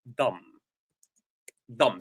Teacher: we write it with the last b that is not pronounced